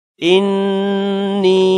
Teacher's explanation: انی، نون پر بھی غنہ کرنا ہے۔ یا کو لمبا کرنا ہے مد کی وجہ سے